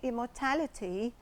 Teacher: it's a noun that is stressed on the third syllable